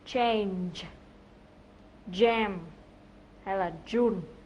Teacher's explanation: Các bạn cần lưu ý đây là một phụ âm kêu, voiced consonant. Và phụ âm này được tạo ra giữa phần mặt lưỡi trước và vòm miệng, âm tắc sát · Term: phụ âm j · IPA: dʒ